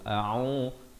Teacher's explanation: Yang pertama hamzah makhrajnya di pangkal kerongkong, keduanya ain berbaris dhammah di pertengahan kerongkong 2 harakat.